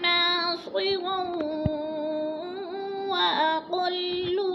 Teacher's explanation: نا کو ہم نے کھینچنا ہے، الف مد ہے، رو 2 زبر تنوین، آگے وہ مشدد ہے، ادغام کریں گے یعنی ملا کر پڑھیں گے